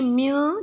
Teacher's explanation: من کی ادائیگی میں نون کی آواز نہیں نکالنی، نون غنہ پڑھنا ہے یعنی کہ من، کیونکہ نون ساکن ہے۔